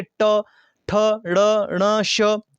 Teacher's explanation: अब मूर्धन्य व्यंजन की बात की गई है, तो वो आपका आता है ऑप्शन नंबर बी, ट। मूर्धन्य का आपने एक सीधा सा फंडा याद रखना है कि जिसमें आपकी जीभ हल्की सी टेढ़ी मुड़ जाती है। देखिए ट, ठ, ड़, ण, श, इसमें जीभ क्या है, वो हल्की सी मुड़ जाती है पीछे की ओर, तो ये आपके आते हैं मूर्धन्य व्यंजन।